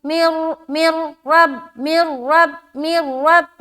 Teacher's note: نون کو را سے ملائیں گے یہ ادغام تام ہے جو کہ بغیر غنے کے ہوتا ہے